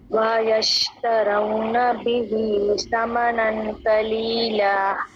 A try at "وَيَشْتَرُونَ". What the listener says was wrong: وَيَشْتَرُونَ نہیں را پیش و رو وَيَشْتَرُونَ را موٹا بھی ہوگا